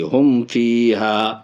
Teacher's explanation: فا آ رہا ہے، اس لیے یہاں پہ ناک میں آواز نہیں جائے گی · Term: میم کا اظہار